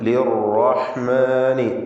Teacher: ലിർറഹ്മാനി, റാഇന് പൂർണ്ണമായ തഫ്ഖീം. ലിർറ എന്ന് പറയുമ്പോൾ ഒറ്റ ശബ്ദുള്ള റാ ഉച്ചരിക്കണം. ലിർ എന്ന് വിറപ്പിച്ചുകൊണ്ട് പറയരുത് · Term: ഒറ്റ റാ